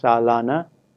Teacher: the middle syllable is stressed and the duration is more than the first syllable not only that the first syllable has a reduced vowel in